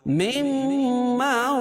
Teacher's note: مما رزقناكم من قبل أن يأتي يوم لا بيع فيه ولا خلة، مما اصل لفظ ہے من ما، من ما یعنی نون ساکن کے بعد میم ہے، تو میم مشدد ہو گیا، میم کو حذف کر کے میم کو میم میں ملائیں گے، میم کا میم میں ادغام ہوگا تو میم مشدد ہوگا، یا غنہ کریں گے